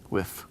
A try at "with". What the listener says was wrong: So if this is whiff, but they're different. This is a TH and this is a double F, correct?